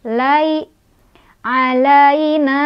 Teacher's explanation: ada harf lin karena ada ya sukun didahului oleh huruf berbaris fathah di lam. Cara bacanya lembut atau lunak.